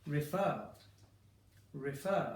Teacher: I am stressing the back of it.